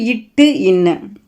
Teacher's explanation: நாவின் நுனி அன்னத்தின் நுனியை பொருந்துவதால் பிறப்பது இட்டு இன்னு